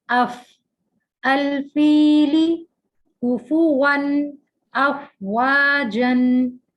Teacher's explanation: فا نچلے ہونٹ کے گیلے حصے کو اوپر کے 2 دانتوں کے کناروں سے لگا کر ادا کیا جاتا ہے